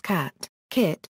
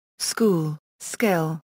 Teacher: English dialects the CK sounds in these words are not identical in cat and kit the sound is aspirated · In cat and kit the sound is aspirated, while in school and skill it is unaspirated. The words therefore contain different speech sounds, or phones, transcribed, K-degree for the aspirated form, K, for the unaspirated one.